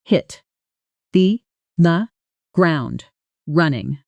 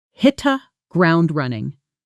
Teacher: Notice the connected speech. Hit the often blends into something closer to hitta and ground running flows together smoothly almost like one long word.